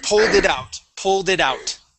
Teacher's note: Think of them as being separate. So pull, and then slide that D over with it.